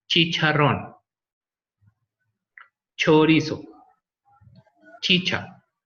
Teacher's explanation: That these two sounds are like a combination of one plosive, that is t, and one fricative, that in this case is sh, t, sh. So this sound is like a sh, but stopped. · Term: affricate